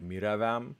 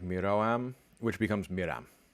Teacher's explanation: Vowels, when you have a bunch of vowels in hiatus, so all in a row, disappear.